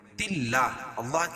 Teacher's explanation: اللہ کے نام سے پہلے زیر ہے تو اللہ کا نام باریک پڑھا جائے گا